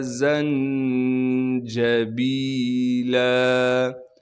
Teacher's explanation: نون پہ اخفا یعنی غنہ کریں گے، جیم پر قلقلہ نہیں کیا جائے گا اس لیے کہ جیم ساکن نہیں ہے، با کے بعد یا مدہ ہونے کی وجہ سے با کو ایک الف کے مقدار کھینچیں گے، لام پر جب وقف کریں گے پھر لام کو ایک الف کے مقدار کھینچنا ہے۔